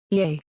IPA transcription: iː